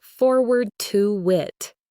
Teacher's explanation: It becomes forward to wit, with that intrusive W sound.